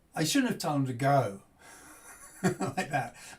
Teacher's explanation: younger speakers might only put two stresses in where we're putting three